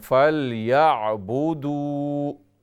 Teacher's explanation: دال واو پیش دو لمبا کریں